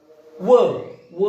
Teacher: व हे एक अक्षर असं आहे की ज्याचा उच्चार करण्यासाठी आपल्याला दोन्ही ओठाची मदत घ्यावी लागते. म्हणून व सुद्धा ओष्ठ्य वर्ण आहे.